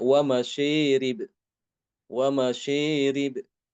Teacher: mengimalahkan alif yang terdapat setelah shin pada kata masyarib